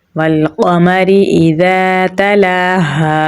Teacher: रा बारीक पढ़ा जाएगा क्योंकि इसके नीचे ज़ेर है